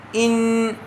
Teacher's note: یہاں نون کی آواز کو ناک میں چھپا کر پڑھیں گے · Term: اخفاء